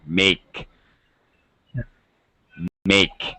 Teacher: stretch your mouth a little more and move your tongue so you get a kind of a y sound